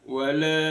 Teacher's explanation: ada lam alif bertemu dengan alif di kalimah yang lain namanya mad jaiz munfasil dibaca lima harakat